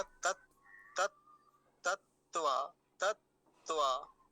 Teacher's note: 2 तकार हैं और दोनों ही कैसे हैं? हलंत हैं, आधे हैं। तो उनका दोनों का ही उच्चारण बहुत कम समय के लिए होगा।